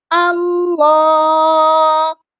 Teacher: یہاں پر اللہ کے لام پر کھڑی زبر ہے، اس کو ہم نے لمبا بھی کرنا ہے اور لام کو موٹا بھی کرنا ہے